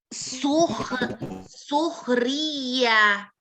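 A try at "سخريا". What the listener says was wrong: Ya-nya panjang 2 harokat coba.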